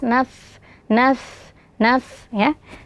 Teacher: Fa ini memiliki sifat hamas dan urkhawah. Jadi alirkan suara dan nafas.